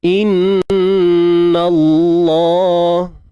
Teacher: Nun bersabdu kita dengungkan, tuan-tuan puan, gunnah musyaddadah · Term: Dengung sempurna